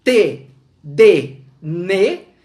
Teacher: a língua encosta nos dentes